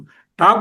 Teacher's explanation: ట అన్నప్పుడు ఆ హార్డ్ ప్యాలెట్ కి తగులుతుంది ష అన్నప్పుడు కూడా వెళ్లి నాలుక అక్కడే తగులుతుంది అందుచేత ష ట ఠ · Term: మూర్ధన్యాలయినటువంటి